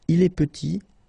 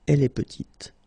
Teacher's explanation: Final T is not pronounced, and then when you add this E at the end, you get the sound T